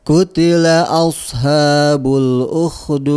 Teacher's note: bukan shin ya. Sin tapi ditebalkan ya